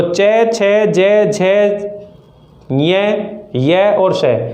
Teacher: इनका उच्चारण तालु से होता है और ये तालव्य वर्ण कहलाते हैं